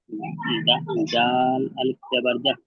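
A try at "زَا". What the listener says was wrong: আচ্ছা, এই যে জা আলিফ জবর জাহ কেন হবে? আলিফের ডান দিকে জবর থেকে তো আলিফ মাদ্দা, একে এক আলিফ পরিমাণ টান দিয়ে পড়তে হবে তো। আপনি জাহ করছেন।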